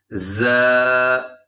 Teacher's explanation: اس حرف کے اندر سیٹی ہے، اور اس کی آواز ہوتی ہے جیسے شہد کی مکھی کا ساؤنڈ ہوتا ہے